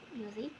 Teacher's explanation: In the base word music, the primary stress falls on the first syllable.